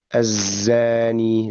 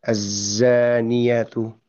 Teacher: suara konsonannya huruf zai itu itu masih mengalir